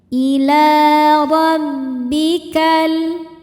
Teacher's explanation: dbaca secara tafkhim karena harakatnya di atas yaitu harakat fathah. Cara bacanya ditebalkan.